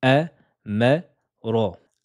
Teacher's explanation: Aminci, aminci, et la lettre ro est emphatique.